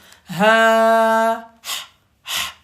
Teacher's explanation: c'est vraiment au fond de la gorge. Ça reste bloqué au niveau de la gorge. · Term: petit H